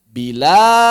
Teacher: Maka si harokat hamzah dipindahin ke lam, diganti yang asalnya sukun menjadi fathah. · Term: naql